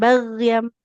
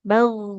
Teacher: tebal terangkat pangkal lidahnya